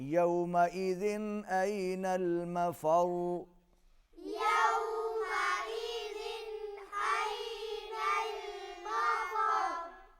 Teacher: يَوْمَئِذٍ دو زیریں ہیں، تنوین جن کو کہتے ہیں، اس کے بعد حروف اظہار میں سے حمزہ ہے، یہاں پر اظہار ہوگا، آواز ناک میں جاری نہیں رہے گی۔ أَيْنَ الْمَفَرُّ، را کے اوپر تشدید ہے، یہاں پر آواز را کی آواز ہم تھوڑی سی دیر کے لیے جاری رکھیں گے۔